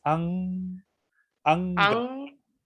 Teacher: como si la pronunciaras casi sacando el aire por la nariz.